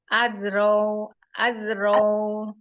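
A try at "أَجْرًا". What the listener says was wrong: enggak az itu kembali ke zai lagi. Aja tadi udah bisa. Ajrow. Ajrow.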